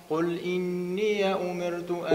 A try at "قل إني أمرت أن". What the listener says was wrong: أمرت رقق.